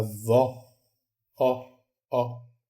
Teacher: a vó ela é mais aberta a vo ó ó a boca fica mais aberta e aí